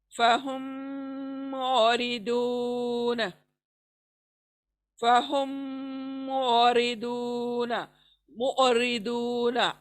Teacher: آئین کو چھوڑنا نہیں ہے، آئین کو حلق سے نکالنا ہے، साकिन आइन निकालना है, उसकी आवाज छोटी सी आएगी।